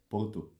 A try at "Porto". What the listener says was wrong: não consegue dizer os R's. You can't say R's.